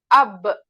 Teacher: और वेट part जो अंदर का होता है होठों का हिस्सा वहां से अदा होगा बा